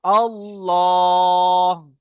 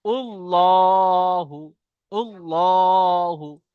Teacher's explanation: যেই লামের উপরে তাসদিদ থাকবে তাকে লাম মুসাদ্দাদ বলা হবে। তো আল্লাহর শব্দের লাম মুসাদ্দাদের পূর্বে যদি জবর অথবা পেশ আসে, কি হবে? আল্লাহ শব্দকে পুর করে পড়তে হবে।